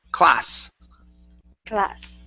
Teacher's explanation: Instead of class with the Z sound, it's an unvoiced S.